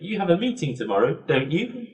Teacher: the whole question is actually a little bit higher when I'm saying it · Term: rising intonation